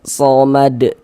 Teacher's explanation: Salah. Kalau kita berwakaf di huruf dal kita baca somad. Huruf dalnya kita sukunkan, kita matikan.